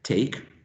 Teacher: the initial t is aspirated in initial position. K in final position is not.